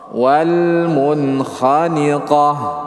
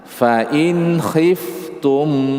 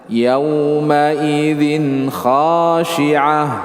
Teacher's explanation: tanwin nun sukun jelas ketika bertemu dengan huruf kha.